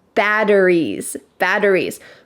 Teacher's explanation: in American English when we say batteries, that T changes to a D. Sound. Batteries, batteries.